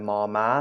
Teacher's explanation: The initial M sound, as we would say it, can be extended by your vocal cords as long as you want. Right? So this sonorant sound is what actually makes it a sonorant.